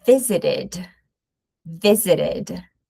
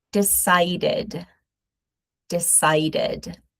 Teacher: we are going to pronounce id sound. So we do have an extra vowel sound here.